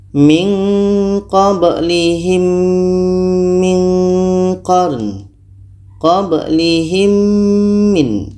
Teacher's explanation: Kita dengungkan mim mati bertemu mim. Ini idgham yang keenam, idgham syafawi.